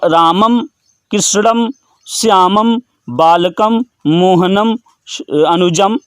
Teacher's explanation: जो अनुस्वार है उसका उच्चारण स्थान क्या है, नासिका